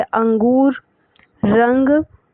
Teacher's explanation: अनुस्वार में केवल जो हवा होती है नाक से ही निकलती है